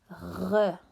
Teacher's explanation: the very French sound, R, that comes from the back of your throat